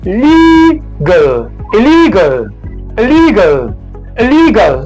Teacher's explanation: the stress syllable is the one in the middle.